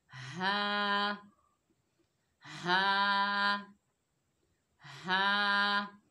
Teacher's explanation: हा हलक के नीचे वाले हिस्से से अदा होगा जो सीने की जानिब है।